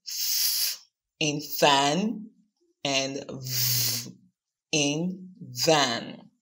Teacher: Consonant produced using the lower lip and the upper front teeth are called labial dental sounds, as in f in fan and v in van.